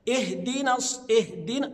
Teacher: انا ما اعملش لها نبر ولا قلقله ابدا